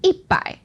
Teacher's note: So we got 一, which is the first tone. 一百, that changes into the fourth tone and the third tone.